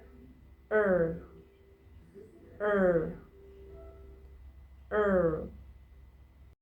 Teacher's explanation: It's a mid-center r-colored vowel and in American English it's considered a short vowel.